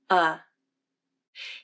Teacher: This vowel is a relaxed and neutral vowel in American English the jaw drops to mid level and the lips and tongue are relaxed · drops to mid level and the lips and tongue are relaxed the back of the tongue is in the middle of the mouth not arched up high and not pulled completely low and the tongue tip is down behind the bottom front teeth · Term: UH as in butter, UH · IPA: ʌ, /ʌ/